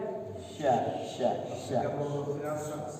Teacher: Sin besar itu di tengah-tengah lidah sekali.